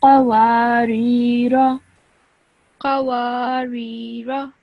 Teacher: just make sure that when you say this first letter off, you say it from your throat. Okay, so within your throat, a bit deeper on, you have to kind of make an effort to say this letter.